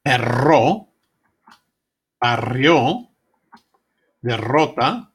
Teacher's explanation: the tongue is positioned just as with a single R, except that it is held there briefly and allowed to flap, creating the rolling effect.